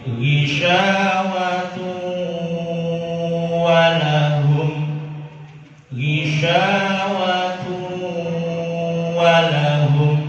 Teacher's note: mengucapkan dengan nun mati dan tanwin bertemu waw dan ya tidak boleh ditekan tapi diringankan